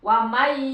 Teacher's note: Karena ini idgham kan dimasukkan suara nun ke iya, jadi lembur, enggak terdengar nunnya. Langsung terdengar iyanya. Wa may, tapi ditahan, menunjukkan bahwa ada huruf yang masuk gitu. · nun mati menghadapi iya, masuk ke iya. Jadi suaranya suara iya.